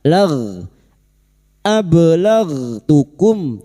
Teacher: Ghi bukan qalqalah. Huruf ghain memiliki sifat jahar dan rakhah, tertahannya nafas dan mengalirnya suara, tetapi jangan dipantulkan.